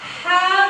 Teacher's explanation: Kalau ha itu lidahnya turun dari tenggorokan yang tengah.